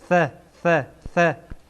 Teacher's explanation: سر زبان به سر دندانه های پیشین بالا برخورد میکنه و ثا ادا میشه